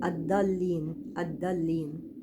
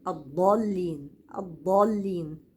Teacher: نطق الضاد من اخر الحافه وليس من الطرف